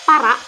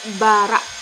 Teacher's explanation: maka pengucapan P diucapkan B karena lebih dekat makhrajnya dan banyak keserupaannya